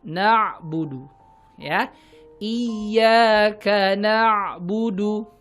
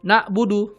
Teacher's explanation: Pastikan na'budu pakai ain, bukan na'budu pakai hamzah. Na'budu tengah tenggorokan, jakunnya tuh yang buat cowok ya. Sedangkan na'budu pakai hamzah, tenggorokan bagian bawah. Itu jelas 2 huruf yang berbeda.